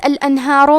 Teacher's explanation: حرف را کو موٹی آواز میں پڑھیں گے کیونکہ اس پہ پیش ہے